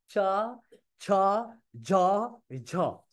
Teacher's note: জিহ্বা উপরে তালুর সাথে লাগছে, তালুর সাথে লাগছে, তার মানে হচ্ছে তালব্য। তো চ বর্গ মানে হচ্ছে তালব্য।